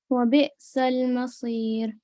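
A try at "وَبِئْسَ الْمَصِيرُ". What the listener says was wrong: बे नहीं होगा, बा कसरा बी। पहले आप बोले बा कसरा बी। हाँ, अब ये जो बा कसरा है इसको आप कैसे पढ़ेंगी? बी पढ़ेंगी, बे नहीं पढ़ेंगी। बा कसरा बी। वबिअसल मसीर। ये थिन आपने इसको पढ़ना है कसरा को, ठीक है जी? बे नहीं पढ़ना, ठीक है? बे साउंड आ रहा है।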